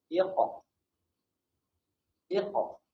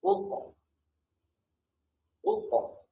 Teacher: Untuk huruf Qaf, cara lantunan dia bunyi macam O. Huruf O, bunyi macam huruf O, bahasa Rumi tu.